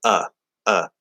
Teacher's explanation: it could be a little bit more open maybe a little bit more back but it's basically just like you're trying to say uh uh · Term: upside down V